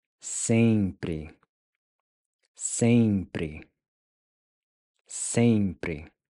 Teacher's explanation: So to pronounce pri, you can start by saying para, para, para, pri, pri, pri. Then the EM is pronounced with the nasal ng sound. Ng. So putting it all together, you get sempre, sempre, sempre.